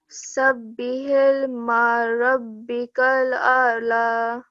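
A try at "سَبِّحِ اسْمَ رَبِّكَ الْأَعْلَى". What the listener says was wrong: This is seen. So, Sabbihisma rabbikal a'la.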